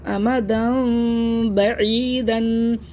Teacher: میم کی آواز کو ہم ہونٹوں میں معمولی سی جھری بنا کر پڑھیں گے، ادھوری آواز نکلے گی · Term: اخلاف